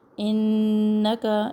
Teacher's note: انک نون مشدد غنہ ایک الف کے برابر